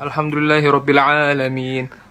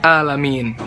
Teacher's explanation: contoh kesalahannya yang paling sering orang lakuin itu di Alfatihah alhamdulillahirobbilalamin alamin dibacanya enggak jelas Ainun jadi Hamzah malah jadi alamiin